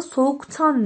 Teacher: soğuktan derken KT şeklinde sertleşmiş olduğunu görürüz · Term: ünsüz benzeşmesi